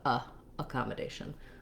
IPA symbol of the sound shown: ə